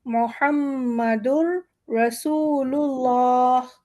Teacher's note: لام ہمارا موٹا ہو جائے گا